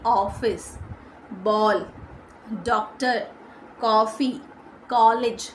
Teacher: अच्छा कुछ भाषा के ना जैसे विदेशी भाषाएं तो उनके कुछ शब्द ना हमारी भाषा में भी आए हुए हैं जिसकी साउंड होती है ओ ध्वनि जैसे डॉक्टर है ना क्लॉक तो इसका उच्चारण आ या ओ की ध्वनियों के पासपास का होता है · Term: आगत स्वर